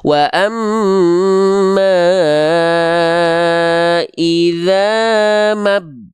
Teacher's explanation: Mad thobiinya gagal aktif cukup baca satu harakat · dari Ma langsung masuk ke huruf ba-nya